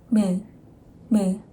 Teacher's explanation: Sejong the Great explains mium is bilabial sound, and that means this sound is made by lips.